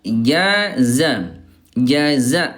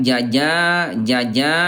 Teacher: jim tengah lidah, zai ujung lidah